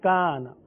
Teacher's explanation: الف سے پہلے باریک حرف ہے کاف، لہذا الف کو بھی باریک پڑھیں گے، کانا۔ تو پتہ چلا الف سے پہلے والا حرف پر تو الف بھی پر، اور الف سے پہلے والا حرف باریک تو الف بھی باریک پڑھا جائے گا۔